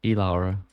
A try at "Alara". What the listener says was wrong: Why are you pronouncing the E so heavily? It is. But E can have different sounds.